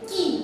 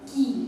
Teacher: छोटी ई बोलने समय हम झटके में बोलते हैं की, और बड़ी ई को थोड़ा सा खींचते हैं की